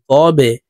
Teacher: কলকলার হরফ নিচের দিকে ধাবিত করে ধাক্কা দিয়ে উচ্চারণ করব